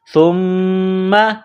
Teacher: سا کو باریک کرنا ہے، سا کو میم کے ساتھ ملانا ہے ، میم مشدد ہے تو یہاں آواز ناک میں چھپائیں گے،